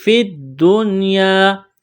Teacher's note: دنیا نون ساکن کے بعد یا ہے، لیکن یہاں پر اخفا نہیں کریں گے، آواز ناک میں نہیں چھپائیں گے، نون مشدد پر غنہ کریں گے، آواز ناک میں چھپائیں گے۔